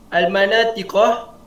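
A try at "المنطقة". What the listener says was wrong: Ya, bukan Al-Manatiqah tu. Buku tu salah. Al-Man. Matikan nun tu. Al-Mantiqah.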